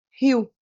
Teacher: quando eu digo a palavra Rio ó Rio então o que que acontece o i ele é uma vogal e o o é uma semivogal · O I, ele é uma vogal e o O é uma semivogal, como se fosse rio, né? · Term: ditongo decrescent, ditongo decrescente